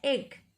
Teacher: ए वाला ए नहीं, थोड़ा सा मुंह खोलकर बोलेंगे एग.